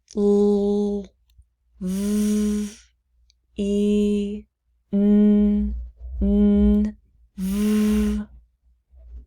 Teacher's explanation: If you say those sounds touching your throat, you will notice that your vocal cords are moving. They're vibrating. That means they are voiced consonants or they are vowels.